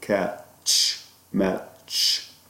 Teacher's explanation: One of them is called ch, which is it's like saying the t and the sh, bringing t and sh together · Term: Affricate